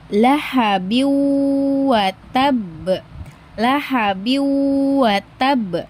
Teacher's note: Huruf huruf huruf-huruf idgham bigunah yaitu ada mim, nun, wau, dan ya. Sehingga harus dibaca idgam disertai dengan dengung di hidung atau guna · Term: idgam biguna